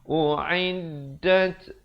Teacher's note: ada bunyi anginnya di situ, hamas